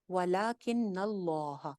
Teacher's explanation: वलाकिन्नल्लाह, वलाकिन, वला एक अलिफ लंबा, लाम खड़ी जबर ला एक अलिफ लंबी हो जाएगी, काफ जेर नून किन, नून के ऊपर शद है, शद के ऊपर गुन्ना हो जाएगा, और आगे अल्लाह के ऊपर भी शद है तो नून की जबर को लाम के साथ ज्वाइन करें।